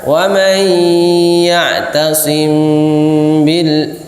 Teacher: Maka wa may ya'tasim bil, jadi ketika ditutup, dua bibir ditutup itu sudah menghasilkan ikhfa, sudah menghasilkan samar